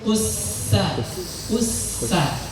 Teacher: ujung lidah itu ditempelkan kepada gigi seri bagian bawah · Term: sin